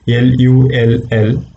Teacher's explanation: For example, when you say the word lull, L-U-L-L, lull, the first one is a clear l sound. The second one is a dark l sound, lull. People, the last sound is a dark l. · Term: clear l and dark l